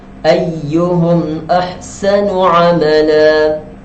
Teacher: Mim yang bertanda sukun dibaca dengan tidak dengung.